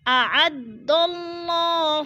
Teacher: اعد اللہ، اللہ پر پڑھا جائے گا۔ اللہ سے پہلے لفظ دال کے اوپر زبر ہے تو اللہ کو ہم پر کر کے پڑھیں گے